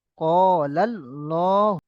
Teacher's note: হার উপরে পেশ এসছে, এই লামের উপরে খাড়া জবর এসছে, খাড়া জবরটা আলিমাদের সমান এক আলিফ টেনে পড়তে হবে। · আল্লাহ লাম মুসাদ্দাদের পূর্বে জাবার এসেছে, তাই আল্লাহ লামকে পুর করে পড়ব